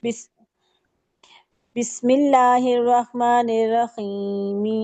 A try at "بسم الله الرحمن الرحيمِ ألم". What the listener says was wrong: ना, रहीमी अलम नहीं, मद आरिज नहीं करते होते, जब मिला के पढ़ते हैं ना तो मद आरिज नहीं होती। बिस्मिल्लाहिर्रहमानिर्रहीमी अलम, अर्रहीमी अलम, ऐसे, ठीक है।